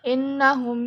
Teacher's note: innahum itu masuknya ke gunah karena nunnya bertasjid